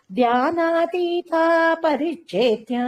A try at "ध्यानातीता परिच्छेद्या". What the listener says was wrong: அந்த ஆவக்கு வந்து நீட்டி சொல்லுமோ, ஏன்னா அபரிச்சேத்யான்னு இருக்கு. பரிச்சேதம்னா பிரிக்கிறது, பரிச்சேதமே பண்ண முடியாதவள், அதாவது பிரிக்க முடியாதவள், அதான் அபரிச்சேத்யா.